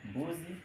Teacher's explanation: hapa kuna sauti ya midomo ba, kipasuo cha midomo ba, hivyo na itabadilika kufuata matamshi ya kipasuo cha midomo, ambapo nazali ya midomo ni ma. Mfano kwenye neno mbuzi.